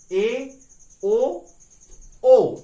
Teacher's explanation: विवृत स्वर में जितना मुंह खुलता है उससे कुछ कम मुंह खुलता है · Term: अर्ध विवृत स्वर